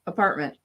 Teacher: We just finish the word that ends in T. We don't say the T. Instead, we just kind of stop the word.